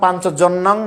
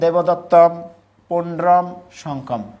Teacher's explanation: অনুস্বারকে ম উচ্চারণ করতে হবে